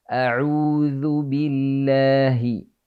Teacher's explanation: lafdzul jalalah bertemu harokat akhir kalimat sebelumnya adalah kasrah maka dibaca tipis